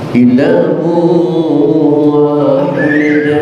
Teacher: tanwin ketemu waw, idgham naqas, idgham kurang